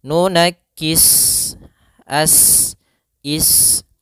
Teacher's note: Maka cara membacanya sempurnakan daripada desisan huruf sin, yaitu nafas kita mengalir dan ada sifat, dia sifat shafir